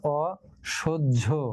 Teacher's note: স ছিল স, অ, কিন্তু সেই অটা ও হয়ে যাবে